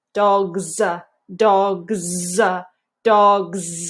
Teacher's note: hear that that vibrating when we have this s after a voiced speech sound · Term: vibrating Z